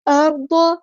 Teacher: را ہمارا یہاں پہ ہیوی لیٹر ہے پورا ادا کریں گے، ضاد بھی ہمارا ہیوی لیٹر ہے پورا ادا کریں گے، اور ضاد کی زبر کو لمبا نہیں کرنا